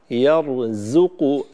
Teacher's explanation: الزاي حرف مرقق، جاور الراء وهو حرف مفخم، فينبغي أن تمايز بينهما وتعطي الراء تفخيمه والزاي ترقيقه.